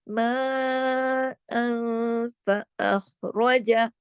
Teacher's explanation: تو ان سیدھا سیدھا اظہار نہیں ہوگا، سیدھا سیدھا ما ان نہیں پڑھیں گے، اظہار نہیں ہوگا، تھوڑا سا نون کی تھوڑی سی آواز ناک میں جائے گی، تھوڑی سی باہر رہے گی، اس کو کہتے ہیں اخفا حقیقی، اور غنہ بھی ہوتا ہے اس کے اوپر چھوٹا کاملہ، ما فأخرج۔